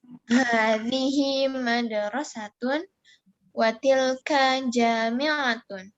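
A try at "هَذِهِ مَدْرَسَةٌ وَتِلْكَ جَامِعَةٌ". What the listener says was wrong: Oke, bagus. Mantap.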